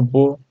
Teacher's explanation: bu we read second tone but we write like fourth tone